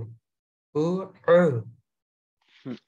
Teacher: আইনের উচ্চারণ কিন্তু একটু লম্বা হয়ে গেল, আর একটু ছোট করে